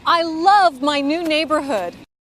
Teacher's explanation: she says the word love louder and slower this shows the word is important to tell about how she